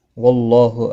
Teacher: اللہ کا لام زبر کی وجہ سے پر پڑھا جائے گا. اس کے اوپر کھڑی زبر بھی ہے، ایک الف کے برابر کھینچ کر پڑھیں گے.